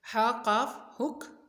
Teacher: یہ دھیان رکھنا ہے کہ شد والا حرف ہمیشہ 2 مرتبہ پڑھا جاتا ہے۔ ہا کی آواز حلق سے نکلے گی، قاف کی بھی آواز موٹی ہوگی، حلق سے نکلے گی۔